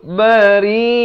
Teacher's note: Ri itu dibaca nipis 4 atau 5 harakat